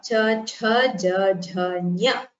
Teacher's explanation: These letters are pronounced from the soft palate and so they are called palatals, and they are called talavya varnas in Sanskritam.